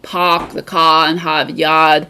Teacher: where we live near Boston, they'll drop the R's